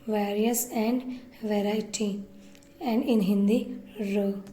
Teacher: आर sound flap से produce होती है जब आर टू वॉवल साउंड्स के बीच में होता है।